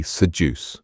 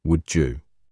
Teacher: Spot the D pronounced as J in connected speech.